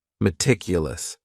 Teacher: The next word is meticulous, and this word has 4 syllables, and the stress is on that second syllable, meticulous, meticulous. That first syllable also has that schwa, that a sound, that reduced vowel sound